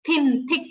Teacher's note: all the nouns begin with th sound, the unvoiced th.